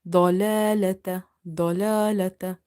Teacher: So in order to make dwad heavy, try not to make these lams heavy.